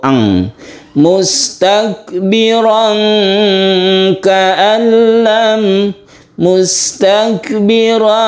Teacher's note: Kaf dan Q ini cenderung suaranya menjadi Eng atau ng · mustakbiran menjadi eng ya, dan kita panjangkan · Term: ikhfa Hakiki, ikhfa